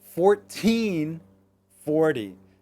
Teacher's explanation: anytime you have a teen, the teen is going to be louder. 13, the second part of the word.